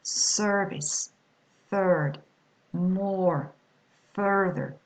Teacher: The vowel R, the vowel plus the letter R, the vowel becomes a long one and the letter R is not pronounced